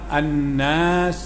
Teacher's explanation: nun bertasydid, wajib bergunah, dengung sekadar dua harakat